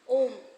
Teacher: ए आ plus बड़ी ई मिलकर ए आ plus उ मिलकर ओ आ प्लस बड़ा उ मिलकर ओ और आ प्लस ऋ मिलकर अर प्लुत स्वर किसको कहते हैं? इनके उच्चारण में दीर्घ स्वर से भी अधिक समय लगता है। · उच्चारण में दीर्घ स्वर से अधिक समय लगता है